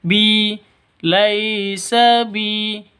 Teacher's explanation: Ya qaumi laysa bi tidak boleh disentak. Bi laysa bi panjang dua ketukan karena ada ya mati diawali dengan kasroh. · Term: mad asli